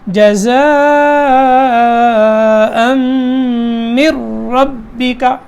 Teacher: پھر را جو ہے وہ موٹا ہوگا، ٹھیک ہے، اس کے اوپر زبر ہے اس لیے.